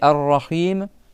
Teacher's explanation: tu as le ro que tu doubles et tu dois prolonger le i avec le ha